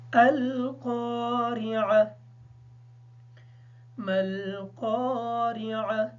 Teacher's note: उमूमन ये सुनने में आता है कि इस आइन को वक़्फ़ के वक़्त या कर दिया जाता है, जबकि आइन को वाज़ह करके पढ़ें